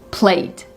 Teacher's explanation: played sounds like a really clear d with no e in there.